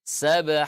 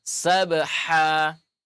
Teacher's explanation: Ha ini namanya ha pedas, keluar dari tengah tenggorokan. Ya, maka keluarkan dari tengah tenggorokan.